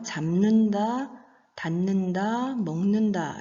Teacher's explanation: 비읍, 디귿, 기역과 같은 무성음 예사소리들이 미음, 니은, 이응의 비음으로 바뀌어서 나는 소리입니다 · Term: 비음화